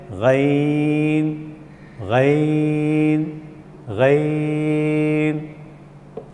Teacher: حروف حلقی کہ ادنیٰ حلق سے منہ کی طرف والا حصے سے نکلتا ہے